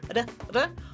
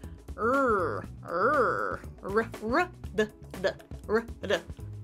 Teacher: the tip of your tongue taps the ridge, or more in the American way, where the tip is curled and a little bit farther back